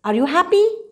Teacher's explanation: from the bottom you go to the top this is called the rising tone in your voice